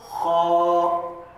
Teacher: हलक के ऊपरी हिस्से से